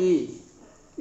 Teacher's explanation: ई बोलते हैं तो जीभ जो है नीचे की ओर पुश करती है